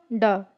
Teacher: मूर्धन्य अल्पप्राण घोष व्यंजन वर्ण का उदाहरण कौन सा है? तो इसका राइट आंसर हो जाएगा ऑप्शन बी, ड।